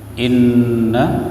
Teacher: Inna non tasydid tajibul gunnah dengung in ya. Na mad jaiz munfasil.